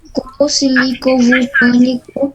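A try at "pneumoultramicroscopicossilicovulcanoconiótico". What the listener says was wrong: É silicovulcano. É silicovulcano, não é silicovulcânico, não.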